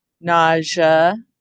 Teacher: when we say nausea, it goes to the zh sound, right? Instead of the sh sound.